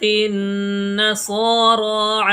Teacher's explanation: صا اور را یہ دونوں کھینچ کے پڑھے جائیں گے، کیونکہ ان کے اوپر کھڑا زبر آیا ہوا ہے، اور یہاں بھی کھڑا زبر ہے۔